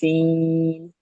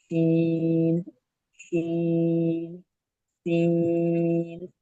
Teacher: सीन के अंदर थोड़ी सी सीटी आनी चाहिए, सीन। होंठों को पकड़ कर और जो है वो जोर लगा कर ना पड़े, बल्कि थोड़ा सा नॉर्मल, सीन, सीन, सीन।